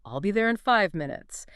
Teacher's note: A native speaker might say it quite quickly. maybe blending in five and giving five a slight stress and maybe an elongated vowel sound